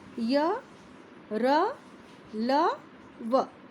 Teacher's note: जिन व्यंजनों का उच्चारण करते समय जिह्वा मुख के किसी भाग को पूरी तरह स्पर्श नहीं करती, उन्हें अंतस्थ व्यंजन कहते हैं। अर्थात जब हम इनको बोलते हैं तो हमारी जो जिह्वा है मुंह के किसी भी भाग को पूरी तरह स्पर्श नहीं करेगी, पूरी तरह छुएगी नहीं।